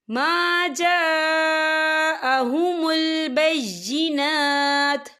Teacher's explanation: من بعد ما جاءهم البینات، یہ دیکھیں ما جا، یہاں خاللی سے پہلے زبر ہے، اور اس پر مد بھی ہے، اور یہ مد جو ہے مد متصل ہے، اس کی مقدار جو ہے 4 حرکت کے برابر ہے، تو ہم اسے 4 حرکت کے برابر کھینچ کے پڑھیں گے۔